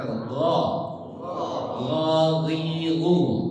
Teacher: Ghain di pangkal tenggorokan itu gha.